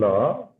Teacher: উচ্চারণে জিহ্বার দুপাশ দিয়ে বায়ু বের করে দেওয়া হয় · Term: পার্শ্বিক ধ্বনি